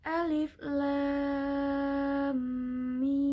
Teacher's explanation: terdapat pada awal ayat al-qur'an dibaca panjang 6 harakat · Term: mad lazim Harfi, Mat lazim harfi muriaba